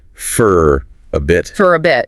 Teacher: where the vowel sound in for becomes less defined, sort of reduced